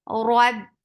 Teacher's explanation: ra is heavy. Whenever ra is with fatha or dhamma, it is heavy attached with ba. Ba has shidda. There is no flow of sound. Roab, ba is short.